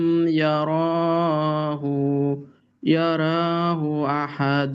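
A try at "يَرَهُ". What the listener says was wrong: আচ্ছা, ইয়ারাহু র লম্বা করা যাবে না, ইয়ারাহু।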